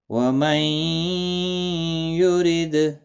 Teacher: دال ساکن پر قلقلہ ہوگا، را زیر کی وجہ سے باریک پڑا جائے گا۔ · نون ساکن کے بعد یرملون کا یا ادغام مع الغنہ ہوگا